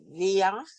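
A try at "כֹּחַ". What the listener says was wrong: That's a kaf. Kuf. So that's a kuf. Yeah, koach. And in Yiddish they say koyach. Koyach. Koyach. Koyach Koyach. All right, koach. It's almost the same thing, koach.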